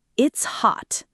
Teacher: When a T is held, your tongue goes to the position to make the T sound, touching the roof of your mouth behind your front teeth, but you don't release the air. There's no puff of air, no explosion. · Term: held T